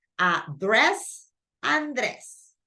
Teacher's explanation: The stress goes in the second syllable